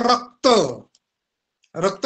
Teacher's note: क हा आपसुकच त्या र कडे ओढला जातो म्हणजेच त्याचा भार त्या र वरती येतो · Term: गुरु